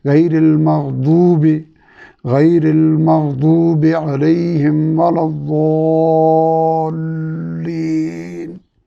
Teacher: بائیں طرف کی 5 کے 5 داڑوں کی جڑ میں زبان کا لمبا کنارہ اس طرح لگے گا کہ زبان کی نوک سامنے والے دانتوں سے دور رہے گی، تب یہ ضاد ہوگا اور زبان اوپر اٹھے گی۔